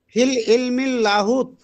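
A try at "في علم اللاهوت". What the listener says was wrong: ফিল ইলমিল লাহুত না ফি ইলমিল আলিফ লাম ছাড়া ফি ইলমিল লাহুত অথবা আলিফ লাম হবে না ফি ইলমিল ইলমের উপরে আলিফ লাম হবে না হ্যাঁ ফি ইলমিল লাহুত বলতে হবে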